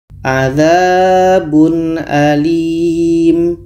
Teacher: tanwin dibaca jelas a dibaca jelas dan tidak dengung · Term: izhar halqi